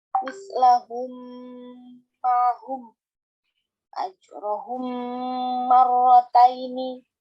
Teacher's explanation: Idgham mimi adalah hukum bacaan mim sukun saat bertemu huruf mim. Cara membacanya adalah mim ditasydidkan dengan mendengung.